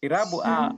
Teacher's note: irabu A unaweza sema ni irabu tande ambayo ni ya chini kati.